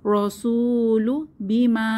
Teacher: হবে পেশের বাম পাশে জমালা ওয়াও মাদের হরফ রসুলু বিমা এখানে বড় টান হবে মাদের সাইন আছে ঢেউ খেলানো চিহ্ন মাদের সাইন তিন আলিফ টানবো